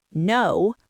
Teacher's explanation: And you say, no, with a hard falling intonation, it sounds aggressive. It sounds like you are angry I even asked.